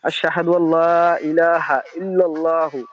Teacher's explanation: আশহাদু আল্লাহ বলছি আমি, নুন পড়ি নাই আমি